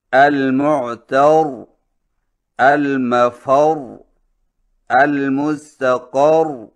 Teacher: وقف اس طرح کریں کہ تشدید باقی رہے اور حرکت کا کوئی حصہ ظاہر نہ ہو